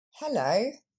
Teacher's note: Et donc on voit que l'accent tombe sur la deuxième syllabe, le lo.